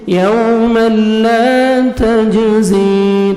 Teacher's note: جیم حروف قلقلہ میں سے ہے ڈبل ساؤنڈ آئے گا